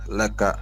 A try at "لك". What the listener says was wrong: نہیں جھٹکا نہیں مارنا. نہیں جھٹکا نہیں. کیسا لکا ریلیکس ریلیکس رہ کے, نہیں لمبا جھٹکے ہی نہیں.